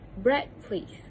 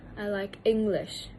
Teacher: in the dialogue B and C, the word bread and English is the most prominent because it provides the information for the listener.